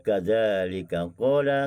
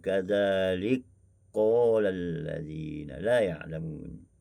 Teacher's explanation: Kaf dimasukkan ke dalam qaf dan qaf syiddahkan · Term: idgham kabir